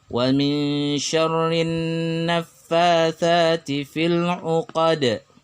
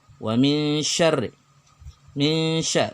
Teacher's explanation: nun sukun bertemu dengan shin, dibaca samar nunnya dan shinnya, kemudian didengungkan sepanjang 2 harakat. Hukum bacanya ikhfa hakiki.